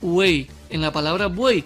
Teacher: Antes, quiero que conozcas la definición de triptongo, que no es más que la concurrencia de 3 vocales en una misma sílaba. Una vocal abierta entre 2 cerradas, son 3 vocales en la misma sílaba. En este caso, el núcleo silábico es la vocal abierta, siempre que será la del medio.